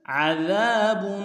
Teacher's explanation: عین کو گہرائی سے ادا کریں گے، ذال کو باریک ادا کریں گے، ذال کے ساتھ الف مدہ ہے، ایک انداز میں کھینچیں گے، با کے اوپر تنوین ہے، تھوڑا سا غنہ ہوگا.